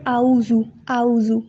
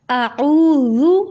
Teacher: کیونکہ الف اور الف نہیں آگے، حمزہ پڑھیں گے اگر ہم او پڑھیں گے، الف اور پھر آئین، آئین کو پیچھے حلق سے ادا کرنا ہے، اعوذ پھر ذال ہے۔